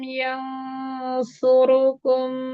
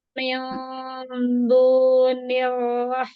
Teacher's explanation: nun ketemu shad bagus, ikhfanya tebal, tapi nun ketemu dal tipis